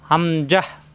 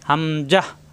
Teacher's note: হামজাহ শক্ত হবে কন্ঠনালে শুরু থেকে